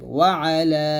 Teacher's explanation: মধ্যে মুনফাসিল 3 আলিফ পরিমাণ টেনে পড়তে হয়